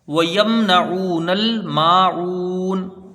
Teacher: میم ساکن کو ظاہر کر کے بغیر غنہ کے جلدی پڑھیں گے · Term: اظہار شفوی